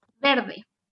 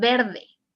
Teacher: the r is like a single r okay it's not too vibrant